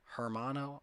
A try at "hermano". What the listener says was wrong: Hermano. The H is silent. Hermano.